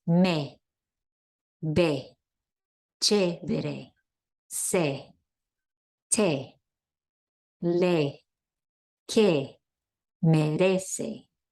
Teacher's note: The E is pronounced E, as in they, but shorter.